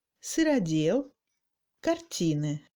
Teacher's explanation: Le OU et le I sont réduits davantage en longueur.